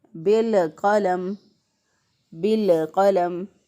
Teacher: बाज़ लोग इसको पढ़ते हैं बिलक़लम बिलक़लम। बिल करके जब अदायगी करते हैं तो लाम पे कलकला कर देते हैं, लाम को हिला देते हैं, तो इस तरह गलत हो जाएगा।